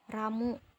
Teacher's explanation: menghembuskan udara hingga lidah tersebut secara berulang-ulang menempel pada dan lepas dari gusi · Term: getar alveolar R